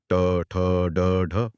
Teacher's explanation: आप बोल कर देखें तो जीभ पीछे मुड़ती है। · मूर्धन्य ध्वनियां वे ध्वनियां होती हैं जिन्हें बोलते समय जीभ को पीछे की तरफ यानी तालू की ओर मोड़ना पड़ता है।